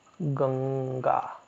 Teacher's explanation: अनुस्वार जो है ना ये न की तरह उच्चारित हो रहा है